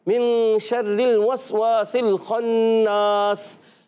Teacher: सीन को अच्छे अंदाज से अदा करना है सीटी के साथ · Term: सीन की अदायगी